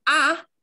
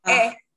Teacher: we go from ah very open down here to a now you can feel it's moving up